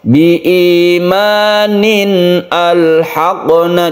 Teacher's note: jadi A-nya tetap dibaca karena dia itu hamzah qat'i atau hamzah asli, hamzah qata' ya.